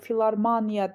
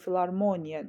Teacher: Vurğulu hecada o hərfi A kimi deyilmir.